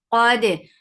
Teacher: Qadi ad is heavy and it has itbaq. The sound is short with fatha.